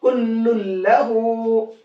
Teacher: तनवीन के अंदर जो नून की आवाज निकलती वो नून की नहीं निकलेगी बल्कि लाम की आवाज निकलेगी। क्यों, क्योंकि तनवीन हो गया लाम के अंदर मिक्स। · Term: इदगाम बिला गुन्ना